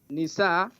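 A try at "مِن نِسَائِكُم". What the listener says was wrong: You skip. You said min. Not nisa, min nisaikum.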